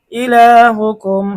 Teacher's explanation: মিম সাকিনের পরে হামজা ইজহারের হরফ গুন্না ছাড়া স্পষ্ট পড়তে হবে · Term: মিম সাকিনের ইজহার